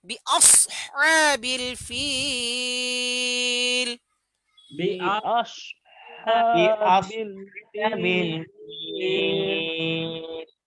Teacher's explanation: মাদের হরফের বামের হরফ ওয়াকফ হয়েছে, মাদ্দে আরিজি 3 আলিফ টানতে হবে। সাদকে মোটা করে বলতে হবে শীষ দিয়ে।